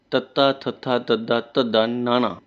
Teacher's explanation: ਜਿਨ੍ਹਾਂ ਧੁਨੀਆਂ ਦੇ ਉਚਾਰਨ ਸਮੇਂ ਜੀਭ ਦਾ ਅਗਲਾ ਹਿੱਸਾ ਦੰਦਾ ਨਾਲ ਜੁੜ ਕੇ ਧੁਨੀ ਉਚਾਰੇ ਉਹ ਦੰਤੀ ਵਿਅੰਜਨ ਹੁੰਦੇ ਹਨ